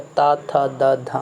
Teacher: ता था द धा, मतलब आपके जीभ पर आके, जीभ जो दांत पर टच हो रही है, मतलब वहाँ पे आके सट रही है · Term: दंत्य वर्ण